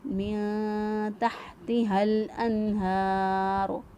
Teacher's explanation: نون ساکن کی آواز کو چھپاتے ہوئے ہم نے نون کو ادا کیا من تحتها، ہا کو وسط حلق سے ادا کریں گے، گلے کے درمیان سے ہا ادا ہوگا